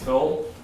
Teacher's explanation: The laxing of the I before L